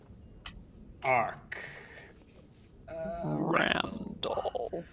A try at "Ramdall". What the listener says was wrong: Ramdall with an M. You mispronounced his name and his eye twitches. R-A-M-D-A-L-L.